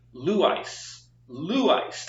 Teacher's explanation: just notice that the emphasis is on that ooh · the accent is on the first syllable which is Lou and then we have the second syllable which is ice